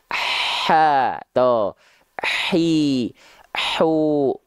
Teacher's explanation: dari segi suara mengalir juga namanya sifatnya rohhwah ya makanya H kecil dia ngalir nafasnya dengan deras